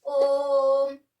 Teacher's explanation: इसको जब हम ओम बोलते हैं, अब आप ओम बोलिए, ओम। ये जो ओ की आवाज आ रही है, ये ले रहा है हमारा 3 मात्रा का टाइम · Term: त्रिमात्रिक स्वर